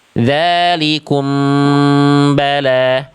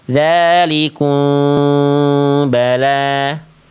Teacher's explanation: Yang pertama ada dengan cara bibir rapat, namanya itbaq atau al-intibaqu ma'a adamil jaz. Jadi dibaca rapat. Dzalikum bala. Ada yang dia caranya furjah, dibaca bibir atas bibir bawah ada celah sehelai kertas. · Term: ikhfa syafawi